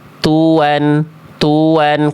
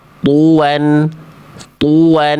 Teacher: Kalau ta itu ada percikan nafasnya dan tipis